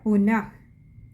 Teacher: അവിടെ വിസർഗമുണ്ട്, പകുതി ഹകാരത്തിൽ വായിക്കുക